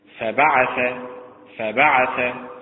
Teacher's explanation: فبعث متعل بالنبر على حركة الباء